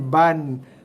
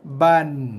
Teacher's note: Sekiranya berbaris dua, terus bunyikan dia dengan bunyi N, ban. Tanpa ataupun tidak boleh sama sekali dibaca dengan bacaan panjang. Ataupun tak boleh dibaca dengan bacaan mat.